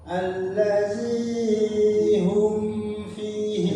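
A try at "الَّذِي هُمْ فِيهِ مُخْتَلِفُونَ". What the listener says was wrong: Zinya kepanjangan. Jadi setiap huruf yang enggak ada padnya jangan dipanjangkan atau diberi jeda berhentinya terlalu lama. Allazi hum fihi mukhtalifun.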